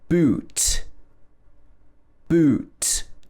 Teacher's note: vowel sounds in english the first is ooh boot boot so your lips are round here